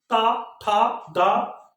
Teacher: तो अर्थात ता वर्ण के जितने भी हो गए वो किससे बोले जाएंगे, हमारे दांत के माध्यम से, दांत की ध्वनि आप देखिए, ता, था, दा, ठीक है, अर्थात मुझे अपने दांत से जीभ को टच करना पड़ रहा है, ठीक है। तो ध्यान रखिएगा दंत, है ना, ता वर्ण किससे, दंत से उच्चारण होता है, ठीक है, उच्चारण की ध्वनि क्या है, दंत है।